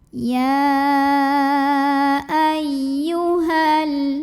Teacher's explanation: Ya tasydid dibaca dengan naber. Jadi kita agak naikkan intonasi kita.